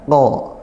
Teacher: Makhrajnya qaf itu di pangkal lidah, lidah yang belakang dinaikkan